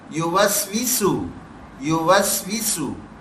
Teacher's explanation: دیکھیں یہ سیٹی کی آواز دے رہے ہیں سین دونوں، یوسوسو، یوسوسو، ایک سیٹی کی سی آواز آ رہی ہے، یہ ہماری آنی چاہیے.